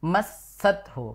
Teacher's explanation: Padahal harusnya masathu, kan ada sin tasydid di situ. Jadi didobelkan. Yang ditahan desisannya ini.